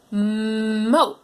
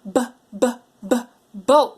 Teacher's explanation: Oh, I heard you say moat with an M sound. But we want boat with that popper sound